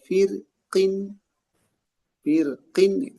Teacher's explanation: Tapi kalau firqin, firqin itu dilanjutkan itu dibaca dengan tipis.